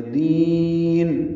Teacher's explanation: دال کو لمبا کرنا ہے، نون ساکن کر دیں گے، زیر ختم ہو جائے گی، مد عارض سکون بن جائے گا، مد عارض سکون بنے گی۔